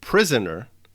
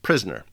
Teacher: The 3-syllable word prisoner is being reduced to the 2-syllable word prisoner. The word has been syncopated. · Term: syncope